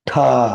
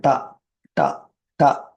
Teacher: டாவை வந்து அழுத்தி பிடிச்சிட்டு ஹா வெளியில் வரணும்